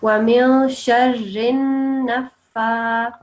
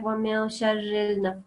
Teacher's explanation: So this lam should not be pronounced. It's going to go straight from the ra to the noon.